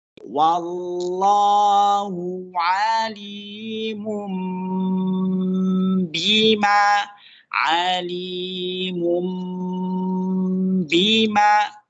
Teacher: Jadi selain ditahan, agak lama, kira-kira 2 harokat, posisi bibir kita itu tertanam. Seperti kita mengucapkan ba, ba, ba. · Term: iqlab